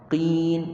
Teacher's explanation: Jadi kalau kita sebut qaf baris bawah, jangan tekan kuat sangat.